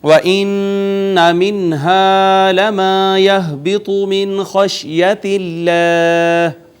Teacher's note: ہا اقصی حلق سے، من پہ پھر اظہار، اور اس میں جلالت کا ماقبل مکسور، لہٰذا ہم نے اس کو مرقق یعنی باریک پڑھا